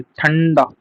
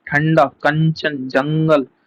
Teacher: अनुस्वार के उच्चारण में वायु नाक से निकलती है